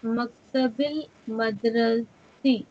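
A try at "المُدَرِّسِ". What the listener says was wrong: Mudarrisi, dhamma on mean.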